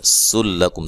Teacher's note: سین کو باریک سیٹی سے، لام کو باریک، کاف کو باریک، میم ساکن کا اظہار ہے، غنہ نہیں کریں گے